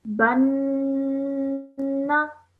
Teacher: you are looking at the noon gunna and you have to stretch that for 2 seconds